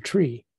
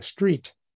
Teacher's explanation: English has retroflex T's